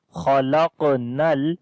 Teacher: On the qaf again we read it heavy sound, but we make also qalqala, which is the weak qalqala. Khalaqnal, noon we connect with the lam, nal, insana. this kasra is coming under the alif, like this is Hamza right now, and this noon is in pink color, because after the noon sakin, the next letter is seen, which is one of from 15 ikhfa letters.